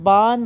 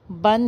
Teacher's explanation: ایسا نہ ہو کہ با دو زبر بند پڑھتے وقت با زبر الف با اور نون ساکن بان ہو جائے، بلکہ بن ہی رہے